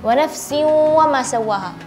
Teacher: alihkan sedikit udara ke rongga hidung supaya terdengar suara dengungnya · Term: idgham bi gunnah